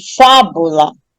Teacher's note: Eu Noto que a mais forte é a anti penúltima sílaba então se a sílaba mais forte é a anti penúltima ela · Lá é a última, bu é a penúltima e fá é a antepenúltima. Aí quando eu pronuncio a palavra fábula, eu noto que a mais forte é a antepenúltima sílaba